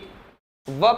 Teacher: आपका जो ऊपर वाला दांत है वो नीचे के होंठ से आकर के टकराता है ऊपर का दांत नीचे के होंठ से आकर के टकराता है